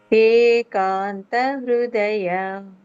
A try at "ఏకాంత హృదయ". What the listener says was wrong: okay very good